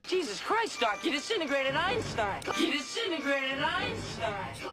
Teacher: So it's not disintegrate, it's disintegrate. It reduces from 4 to just 3 syllables, and the first T sound disappears.